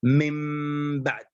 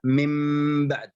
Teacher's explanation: في الإقلاب يكون الإطباق كاملا على الشفتين